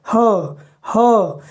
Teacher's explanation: उच्चारण स्थान पढ़ाते समय हमने यह बताया था कि इसका उच्चारण ह का उच्चारण कंठ से करते हैं कंठ से, जोर वहीं होता है ह। लेकिन वायु मार्ग कहीं अवरुद्ध नहीं हो रही है, कंठ द्वार पूरी तरह से खुला रहता है, इसीलिए इसको स्वर यंत्रमुखी या काकल्य ग्लोटल कहते हैं।